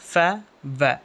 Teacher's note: நம்ம lip lower lip இருக்குல்ல இந்த லிப் வந்துட்டு டீத்தோடைய அப்பர் side அப்பர் front side வந்துட்டு டச் ஆகும். ஃ வ இந்த கீழ் பகுதி கரெக்டா அந்த மேல் பல்கர் பற்கள் மேல பட்டு அது இப்படியே ஓபன் ஆகி அந்த சவுண்டு கிரியேட் ஆகும். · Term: லேபியோ டென்டல்